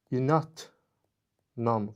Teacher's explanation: Baxın, yazılışda l samiti olsa da tələffüz zamanı n-ya keçdi. Yəni, səs dəyişməsi hadisəsi baş verdi.